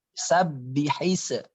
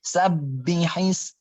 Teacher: Kalau ba-nya yang pertama itu bertasydid, maka dipantulkan. Sabbihis. Tahan, pantulkan.